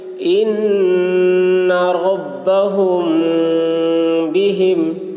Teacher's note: میم ساکن کے بعد با آ رہا ہے، اس لیے غنہ کے ساتھ اخفا کریں گے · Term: اخفاء شفوی